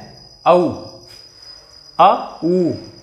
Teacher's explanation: जैसे आ अंदर से बोला कंठ से, और ये ऊ कैसे बोला ओंठों से, तो कंठ ओष्ठ है। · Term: कंठ ओष्ठ्य